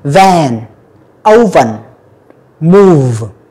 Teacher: Cái âm vờ nó rung lên.